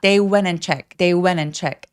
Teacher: 여기서 여러분은 went 같은 경우에는 T 발음 열심히 안 하셔도 돼요. 이유는 NT로 끝나는 단어들의 T 발음을 하지 않아서 그렇습니다